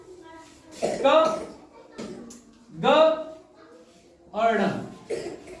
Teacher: अल्प प्राण मतलब जिसमें कम देर तक आप बोले, और हकार की जिसमें ध्वनि ना आए